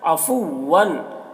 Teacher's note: काना में अलिफ मद्दा है। अफ़ुव्वन, वन की तनवीन में इजहार हो रहा है, इसे जल्द पढ़ना है